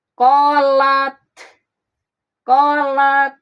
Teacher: Qolat suaranya tertahan disebut syiddah.